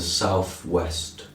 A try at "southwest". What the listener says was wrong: I think you pronounce southwest as southwest. I think I heard an F instead of TH. No, I've heard that. It's a characteristic. I don't know of what part of England.